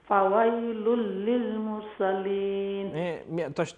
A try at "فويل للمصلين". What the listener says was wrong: تشديد مصلين مصلين دخلنا نسيت الأمر وفر التشديد